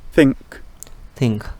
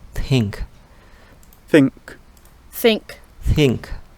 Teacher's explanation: Jadi th tapi dibacanya lebih tidak bersuara, kayak lebih ke desah. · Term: theta